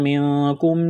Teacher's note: نون ساکن کے بعد کاف ہے، حروف اخفا ہے، غنہ کریں گے، آواز ناک میں چھپائیں گے